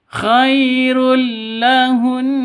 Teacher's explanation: Di sini ada tanwin bertemu dengan lam. Cara bacanya masuk ke lam tanpa dengung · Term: idgham bila ghunah